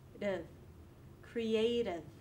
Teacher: Although it's written with an I, it's reduced, dev. Notice that I also flip my T to a D